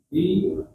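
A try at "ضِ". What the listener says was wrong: Sekali lagi coba lidahnya dirasa bo, tebalkan. Nah, ketika kasrah kadar ketebalan berkurang. Bui, bui, bui, bui. Bui. Kalau kita baca di itu dal. Nah, coba kalau dal, kalau do, nah sama kan?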